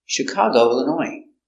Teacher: Illinois comes from French too so we have a silent s in French words they have S at the end it's silent